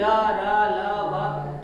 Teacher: जब आप यारा लावा बोलते हैं तो आपकी जीभ टच नहीं कर रही है, बस टच जैसी हो रही है, काफी नजदीक पहुंची, टच नहीं, साउंड दे रहे हैं।